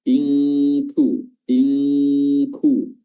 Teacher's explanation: kafnya ini memiliki sifat hams · Nun sukunnya bertemu dengan Kaf nunnya disamarkan diikhfakan dengan meletakkan makhraj lidah kita pada huruf Kaf ya meletakkan lidah kita pada makhraj huruf Kaf yaitu aqsal lisan